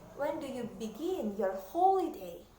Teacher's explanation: Begin di sini yang harus ditekan adalah suku kata terakhirnya, sedangkan holiday ditekan di suku kata pertamanya.